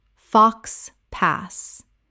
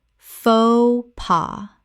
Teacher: Two syllables, both the X and the S are completely silent in this French phrase.